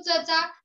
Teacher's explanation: जेव्हा आपण चमचा म्हणू तेव्हा अयुक्त उच्चार होतो च चा, तेव्हा तो वर्ण हा दंत तालव्य असतो